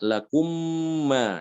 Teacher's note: Ada tasdid dan wajib dibaca gunnah. Sama seperti ikhfa, ditahan gunnahnya sekitar 2 harokat ya. Sekitar 2 harokat ditahan. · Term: idgham